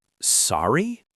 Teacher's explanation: Just sorry with a rising tone like you're asking a question. · You just raise your voice at the end